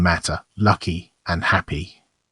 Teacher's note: glottal reinforcement of T K and P